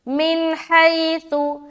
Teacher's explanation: नून जाहिर करके हम जल्दी निकल रहे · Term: इजहार